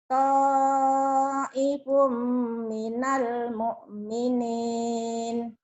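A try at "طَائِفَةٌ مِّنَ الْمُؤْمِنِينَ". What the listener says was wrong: Ta'ifatum. Ta'ifatum. Tumnya ketinggalan ya tadi. Ta'ifatum minal mu'minin.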